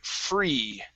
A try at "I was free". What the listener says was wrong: right here you said I was free, and it was more of an eh sound. So give me a good long e sound.